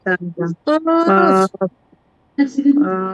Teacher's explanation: 4 চার number number মাখরাজ: 4 number মাখরাজ জিহ্বার জিহ্বার গোড়া গোড়া, তার বরাবর উপরে তালুর সঙ্গে লাগিয়ে কফ উচ্চারণ হয়